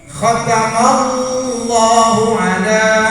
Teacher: Karena bahasa Arab ada alif lam syamsiyah lafdzul jalalah bunyinya antara a dan o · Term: tafkhim